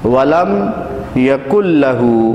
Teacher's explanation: ادغام کا مطلب ہوتا ہے ملانا، یعنی نون ساکن کو ہم نہیں پڑھیں اور اس سے پہلے اور بعد والے حرف کو آپس میں ملا دیں